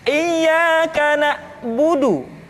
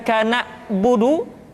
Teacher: ketika huruf ain disukun, maka suara kita tidak boleh mati.